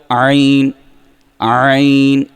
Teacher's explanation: اس کو جیسے کپڑے کو نہیں نچوڑتے، اس طرح آپ نے زور لگا کے جان لگا کے حلق کے درمیانے حصے سے عین کو ادا کرنا ہے